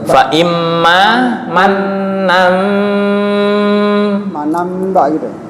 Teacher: fa imma manna ba'du itu asalnya manan, fa imma manan, berhubung tanwin bertemu ba itu adalah iklab